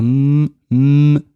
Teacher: M. M. The two lips come together. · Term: mim